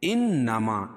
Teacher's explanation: یہ نون مشدد ہے، اس میں غنہ ہوگا